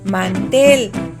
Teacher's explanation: Es una palabra aguda donde la sílaba tónica es tel, pero como termina en consonante diferente a N y S, no se debe tildar, igual que volver.